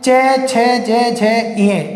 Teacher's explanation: तो तालु वे वर्ण जिनका उच्चारण करते समय हमारी जीभ का जो मध्य भाग है वो ऊपर वाले जबड़े के कठोर हिस्से को स्पर्श करता है, उन्हें तालु या तालव्य कहते हैं।